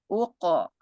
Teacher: huruf qof bersukun di tengah kalimat qolqalah sugro